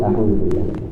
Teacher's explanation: Hamzah itu kan huruf yang letaknya paling jauh yaitu aqsal halqi. Yaitu pangkal tenggorokan bersama huruf ha. Karena dia berada paling ujung, paling jauh sehingga di situ ada penekanan dalam pelafalannya. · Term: huruf hamzah